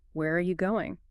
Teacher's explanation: The R reduces dramatically. Sometimes it almost disappears, becoming just a quick resound.